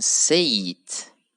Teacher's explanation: we have to add another Y sound between say and it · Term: linking